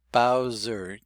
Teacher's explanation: This was spelled as an S, but it changed to a Z in pronunciation. And that happens an awful lot in American English.